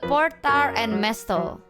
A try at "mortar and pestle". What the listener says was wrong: You got that backwards, but Mortar and pestle?